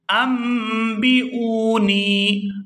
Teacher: یہاں نون پر جو آپ چھوٹی سی میم دیکھ رہے ہیں تو اس میم کو پڑھا جائے گا، حمزہ میم زبر ام، یہاں میم کو پڑھیں گے اور نون کو سائلنٹ کر دیں گے